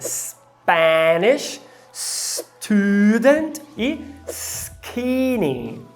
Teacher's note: perde a aspiração é quando ele está após o S